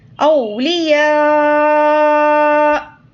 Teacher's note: اگر یہاں پر وقف کریں گے تو حمزہ پر جزم دے کر سانس توڑیں گے